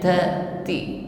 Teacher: huruf ta diucapkan dengan sifat hamas yang menyertainya, ya. Ada nafas yang mengikutinya, ti. Namun karena huruf ta di sini hidup atau berharokat, jadi ya hamasnya tidak begitu tampak, tapi tetap ada.